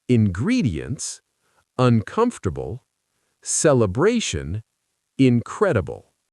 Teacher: Prefixes like un in uncomfortable aren't usually stressed.